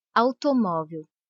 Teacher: Repare que o A é pronunciado com mais intensidade que a letra U. Automóvel. O U quase não aparece, por isso ele é chamado de semivogal.